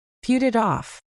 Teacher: When you say put it off, the T sounds at the end of put, and it actually change into soft D sounds because they are sandwiched between vowels. So instead of saying put it off like a robot, you blend it all together. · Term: blended sounds